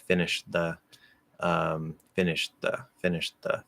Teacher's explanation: We'll also usually use maybe a little bit of a hold before releasing that dental D. That helps to make it a little clearer that it is past tense or something there.